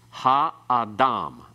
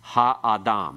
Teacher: Because we have 3 syllables, all with long vowels, then it's ha-adam. The ah part has no accent. The ha has a secondary accent. The major accent still at the end.